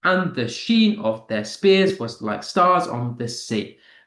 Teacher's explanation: So two unstressed followed by one stressed syllable.